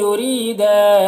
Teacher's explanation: ری میں یا را کو باریک پڑھیں گے